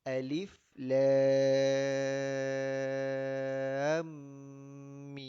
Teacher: Jadi di sini alif lam 6 harakat, antara lam kepada mim 2 harakat, mim 6 harakat lagi. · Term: fawatihus suwar